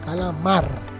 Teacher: laar dónde suena fuerte en la sílaba o el fonema mar Ese mar sería la sílaba tónica la atona sería las dos que no suenan tan fuertes en este caso cala ca esas dos sílabas de esta palabra